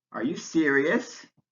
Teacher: is a yes/no question so it has rising intonation